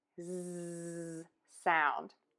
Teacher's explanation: Voice box is on and moving, and you are going to end with that zzz sound.